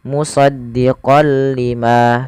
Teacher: Jadi kita hanya memasukkan saja tanwinnya kepada huruf lam dan tidak ditahan. Tidak dibaca dengan musaddiqol lima, tapi hanya musdiqol lima. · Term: idgam bila ghunah, idgham bila gunnah